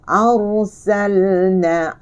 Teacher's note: Hamzah bari atas, ra mati tetapi tebal. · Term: ra tebal